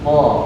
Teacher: dia itu karena hurufnya tafkhim tebal, maka bunyi yang keluar menyerupai o.